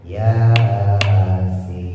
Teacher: Yasin, ya-nya 2 harokat, sin-nya 6 harokat.